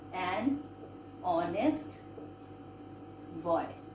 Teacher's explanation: H is silent. So we are pronouncing here an honest boy.